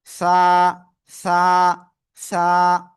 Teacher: জিহ্বার আগা সামনের উপরে দুই দাঁতের আগায় লাগিয়ে আমরা এই অক্ষরটা উচ্চারণ করব।